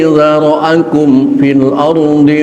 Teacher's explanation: mim mati ketemu fa, ingat hukumnya idhar, jangan diikhfakan